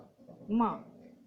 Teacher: उसमें से पाफा बाभा मत तो केवल ओष्ठ से बन जाते हैं, किंतु माँ को बोलने के लिए नासिका भी हमको चाहिए, क्योंकि वायु नासिका से निश्चित होगा तभी अनुनासिक मकार निकलेगा।